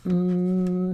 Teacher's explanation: see how my lips are closed my lips are obstructing that sound